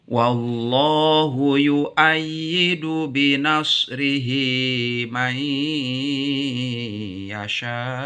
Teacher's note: pada Allah dibacanya dengan tafkhim pada Allah setelah fathah